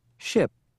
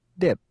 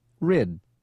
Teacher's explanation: for I keep the sound short and relax your tongue don't spend a lot of time on the I vowel shorten